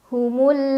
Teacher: alif lam yang bertemu dengan huruf qamariah yaitu Gin cara bacanya alif lam dibaca jelas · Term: alif lam qamariah